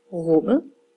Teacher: hvis jeg har ordet rummet så lyder Min korte vokal faktisk lidt mere som et å